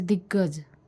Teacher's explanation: संधियों में क का ग होना च का ज होना इत्यादि अघोष के घोष में रूपांतरण का उदाहरण है